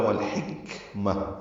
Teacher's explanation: اگر رکنا ہے تو آخر میں تائے مربوطہ ہے، وہ ہا میں تبدیل ہو جائے گی ، لام ساکن پڑھا جا رہا ہے، اظہار ہو رہا ہے،